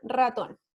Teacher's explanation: la vibrante múltiple que es por ejemplo para decir la palabra ratón ya que está en una posición inicial · Y la R, que es la vibrante múltiple